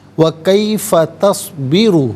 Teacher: तस्बी में र पर पेश है र को पुर करके पढ़ा जाएगा